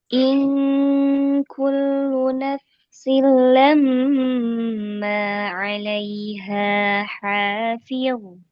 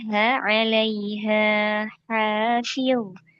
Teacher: Nah, ha-nya ini ha yang pertama panjang, kemudian ha yang kedua juga panjang.